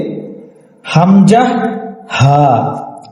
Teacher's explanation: হলকের শুরু হইতে হামজা হা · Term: 1 নম্বর মাখরাজ